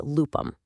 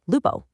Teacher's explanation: The final m in lupum was completely lost to history. And that heavy u softened into this bright open o, giving us the modern Italian loop.